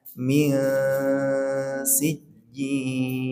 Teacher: Suara samanya ditaruh di rongga di belakangnya gigi seri ya. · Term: samar